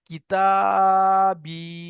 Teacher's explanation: তাহলে আলিফের ডান দিকে জাবার আলিফ মাদ্দা, ইয়া সাকিনের ডান দিকে জের, ইয়া মাদ্দা। ইয়া মাদ্দাকে এক আলিফ পরিমাণ টান দিয়ে পড়তে হবে